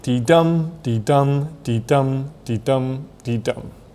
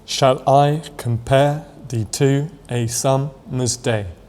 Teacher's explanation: a line of verse with 5 metrical feet, each consisting of 1 short or unstressed syllable, followed by 1 long or stressed syllable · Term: iambic metre